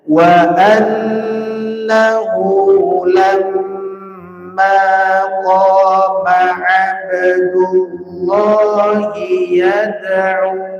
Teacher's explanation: Nun dan mim sama-sama bertasdid durasi keduanya harus sama enggak boleh salah satunya lebih panjang daripada yang lain